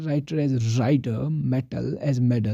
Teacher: in American English, if T occurs between vowels, it is pronounced D. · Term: flapping